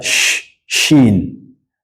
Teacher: Shin gim and Y these three letters come from the middle of the tongue so with Shen your mouth has a little bit of pressure